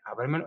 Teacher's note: llevan acento prosódico en la sílaba anterior a la antepenúltima sílaba